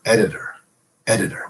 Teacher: there's the flap on the D and there's the flap on the t